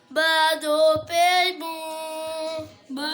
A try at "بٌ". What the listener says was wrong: इधर क्यों गुन्ना कर रहे हो?